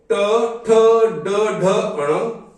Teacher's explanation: तीसरा वर्ग है ट वर्ग, जिसका उच्चारण होता है मूर्धा से।